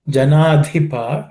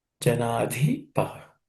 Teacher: Janadhipa, in that dhi is aspirated.